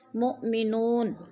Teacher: نون کے اوپر پیش ہے تو وہ مدہ کو بھی ہم نے ایک الف دو حرکات کے برابر لمبا کر کے پڑھنا ہے